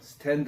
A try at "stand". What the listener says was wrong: 따라서 해보세요. 그냥 스탠드 이러는 게 아니고 스탠드 이렇게 입을 벌리는 느낌으로 해야 돼요. 스탠드 이게 아니고 스탠드 이렇게 해보세요.